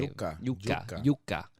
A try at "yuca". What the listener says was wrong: Not like you're saying Jew. Yuca.